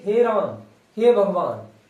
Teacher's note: इसमें दीर्घ स्वर से भी अधिक समय लगता है या तीन गुना दीर्घ से भी अधिक समय लगता है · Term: प्लुत स्वर